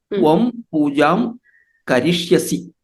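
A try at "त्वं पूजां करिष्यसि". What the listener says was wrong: Samyak. Excellent.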